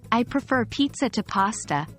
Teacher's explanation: falling intonation it sounds like a firm statement of preference but add a stress on Pizza I prefer Pizza to pasta and it suddenly becomes a passionate Declaration of your love for pizza